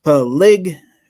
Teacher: So most of the emphasis on the second syllable